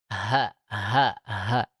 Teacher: H itu diucapkannya sesuai dengan makhrajnya, yakni di pangkal tenggorokan di sini.